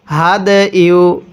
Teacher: এই দালটা পড়ার সময় আমরা একটু ধাক্কা দিয়ে পড়ব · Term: কলকলার হরফ